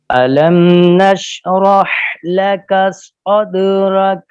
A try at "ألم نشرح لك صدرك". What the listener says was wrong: بولے نہیں، اور زبان اوپر اٹھائیں اور سیٹی نکلے نا. سیٹی کی آواز نہیں آئی. دانتوں کو بند رکھیں. دانتوں کے اندر اگر خلا ہوگا نا تو وہ سیٹی پیدا نہیں ہوگی.